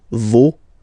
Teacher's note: even if you've got this final s, you don't pronounce it